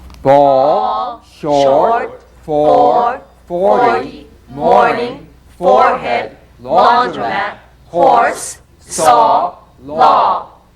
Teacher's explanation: The midway lip opening produces the vowel sound aw as in ball.